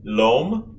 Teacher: the l of alay is the same l far forward behind right at your top front teeth